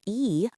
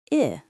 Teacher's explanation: the tension in e, the long sound, and the relaxed I, the short sound